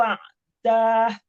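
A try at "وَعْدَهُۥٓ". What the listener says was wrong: Jangan dah, jangan. Jangan dipanjangkan karena nggak ada mat setelah dah.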